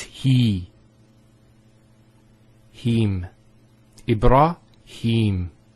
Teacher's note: Here the ha has a kasra followed by the a. So here there's the elongation of the e sound.